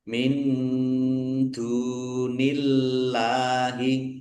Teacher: Allahnya dibaca tipis karena harakat di depannya kasrah.